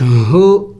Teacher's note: حروف حلق میں سے ہے حلق کے آخری حصے سے ادا کیا جائے گا